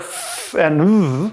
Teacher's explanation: [f] and [v], which are labiodental fricatives